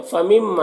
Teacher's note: فمما، یہاں پر نون ساکن کے بعد میم حروف یومین میں سے تو ادغام ناقص ہوگا، غنہ کے ساتھ پڑھیں گے، میم میں الف مدہ ہے، ایک الف کے برابر کھینچیں گے۔